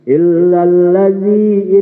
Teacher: zal besar, lidahnya kudu digigit